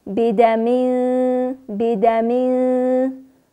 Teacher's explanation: بیدمین اخفا هم باریک، چون حرف کاف بعد از تنوین آمده کاف باریک ادا میشه، پس اخفا هم باریک ادا شده